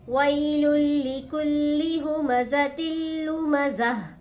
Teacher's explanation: گولتا کو وقف کی صورت میں ہم ساکن ہا سے بدل دیتے ہیں